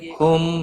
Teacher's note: میم ساکن کے بعد دوسرا میم آیا ہے ادغام شفوی ہوگا, گنہ کے ساتھ پڑھیں گے